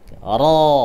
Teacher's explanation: untuk menambahkan huruf ra itu hampir sama dengan isti'la. Ra. Caranya adalah mengangkat pangkal lidah.